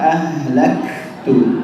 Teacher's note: Kemudian kalimat ahlaktu, haknya itu ditipiskan, ya, ahlaktu, jangan tapi ahlaktu, ya. Kemudian kafnya juga di situ ada sifat al-hamas, ya. Jadi ada hembusan nafas yang keluar.